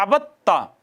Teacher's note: دوسرا یہ ہے کہ دو ایک ہی جگہ سے مخرج سے ادا ہونے والے حروف اکٹھے آ گئے ہیں، پہلا ساکن ہے دوسرا متحرک ہے تو پہلے کو دوسرے میں ضم کر دیا، جیسے عبد تا، دال اور تا اکٹھے آئے تھے، دال ساکن تھی تا متحرک تھی، دال کو تا میں ادغام کر دیا